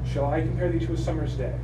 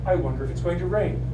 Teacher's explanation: every line has 10 syllables and every second syllable is stress · a combination of two syllables the first is unstressed the second is stressed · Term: ionic pentameter